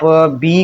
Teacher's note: بی جو ہے ہونٹ آپس میں مل رہے ہیں